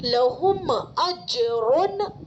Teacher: حروف قلقلہ میں سے جیم آ رہا ہے تو جیم کا مخرج الگ ہو جائے گا ٹکر کھا کر، یعنی قلقلہ ہوگا